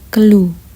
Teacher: bunyi yang dihasilkan pangkal lidah menghasilkan bunyi dorso velar